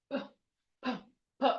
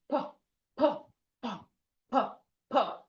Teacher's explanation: So you close your mouth and you release a sharp air. You you release air sharply.